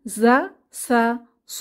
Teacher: এই হরফ তিনটি জিহবার আগা নিচের দাঁতের গোড়ায় চেপে উচ্চারিত হয় তীক্ষ্ণ আওয়াজে